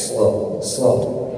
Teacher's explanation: huruf Shad ini Huruf tebal maka ketika mengucapkan huruf Shad Jangan tipis kalau tipis jadi Sin